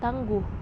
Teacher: direalisasikan sebagai bunyi U tinggi bawah belakang bundar apabila berada pada silabel tertutup